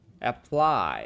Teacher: For this word, the stress is on the second syllable. So the vowel sound in the first syllable for the A sounds very different.